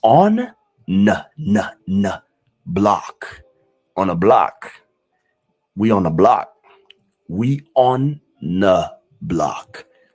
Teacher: But you barely hear the TH in the word the.